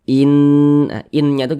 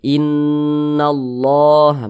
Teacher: suaranya itu kita tahan kita panjangkan sejenak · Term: gunah musyaddadah